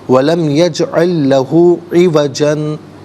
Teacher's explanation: درمیان میں کچھ دیر یعنی سانس روک کر رکیں، اسے سکتہ کہا جاتا ہے